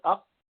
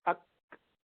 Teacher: اق قلقلہ میں قاف کی آواز کو آگے جاری کر دیا، قلقلہ کر دیا. اور کاف میں کیا کیا؟ آواز جاری نہیں کی بلکہ سانس جاری کر دی.